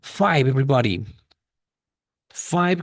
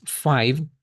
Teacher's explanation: Five con esta pronunciación de la i abierta